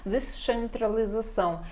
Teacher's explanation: O C pronunciado mais com som de CH para nós